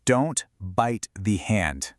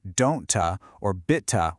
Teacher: for a T sound at the end of a word, you move your tongue into position like you're about to say it, but then you just stop. You don't release that little puff of air. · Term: stopped T